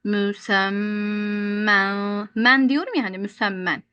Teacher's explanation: Men derken dilimin ucunu kaldırıyorum.